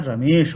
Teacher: रमा का आ और ईश का ई, ये दोनों मिलकर के ए बना दिए तो यहाँ रमेश हो गया।